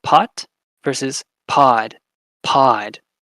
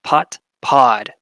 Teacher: you can hear the difference in the length of that vowel